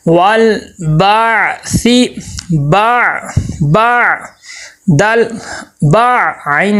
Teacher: عین کی آواز صحیح ادا ہو، حمزہ نہ بنے